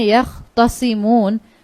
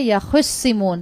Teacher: جو تا تھی اس تا کو بھی صاد میں کنورٹ کر کے ان دونوں کا ادغام کیا گیا ہے